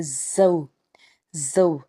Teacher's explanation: زا بھی حرف صفیریہ کا حرف ہے، جب اس کو ہم ادا کریں گے تو سختی آنی چاہیے